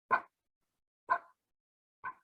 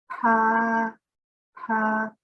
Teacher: we put our lips together and then we're going to pop them apart and let the air come out.